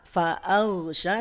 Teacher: hamzahnya jangan terbawa tebal yang tebal hanya huruf Gin saja